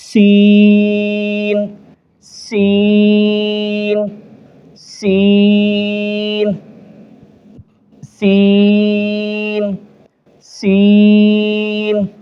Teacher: دونوں دانتوں کو تھوڑا سا معمولی زور دیں گے تو یہ لفظ نکل آئے گا، سیٹی کی آواز نکلے گی